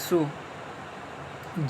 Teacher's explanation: होठों के किनारे क्या है मिलते हैं और बीच का हिस्सा कुछ खुला रहता है यानी होंठ गोल हो जाते हैं। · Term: पेश की आवाज